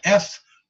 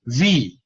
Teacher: what if I take the letter F and I put a voice in it now I got a V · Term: voiced consonant